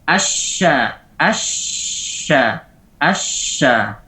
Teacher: Suara shin yang tersebar di dalam mulut. Hatta yastadima bis-safhati ad-dakhiliyyati lil asnan al-'ulya was-sufla. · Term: at-tafashi